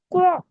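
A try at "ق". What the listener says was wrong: அல்ல க அல்ல க அல்ல. இது கோ இது க அல்ல. க அல்ல கே பண்ணுங்க. க கே வித்தியாசம் விளங்குதா? கோ நீட்டக்கூடாது. கோ கே.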